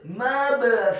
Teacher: Kata mabthutha, huruf mimnya dibaca fathah 1 harokat. Huruf ba-nya dibaca sukun dan wajib untuk diqalqalahkan atau dipantulkan.